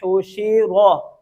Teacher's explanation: हा को वाज़े करेंगे इसके मखरज से हलक के दरमियान से